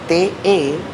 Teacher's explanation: La T, TE, recuerden que le estamos poniendo una vocal para que suene. La T es sencillamente una explosión de la punta de la lengua contra los dientes incisivos superiores.